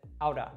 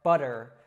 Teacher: it's just a very quick flick of the tongue at the top of the mouth